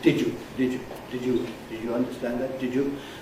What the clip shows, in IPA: ˋdɪʤu